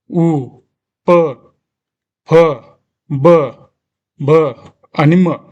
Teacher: औष्ट म्हणजे हे ओठांद्वारे बाहेर पडतात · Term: औषय वर्ण